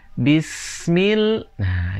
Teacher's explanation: caranya yaitu dimatikan dan dilebur jangan sampai terpantul contohnya disini bismillah Jadi huruf s diperpanjang sampai ketemu dengan huruf mim